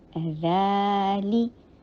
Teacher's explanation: रै टू हरका लॉन्ग, ली शॉर्ट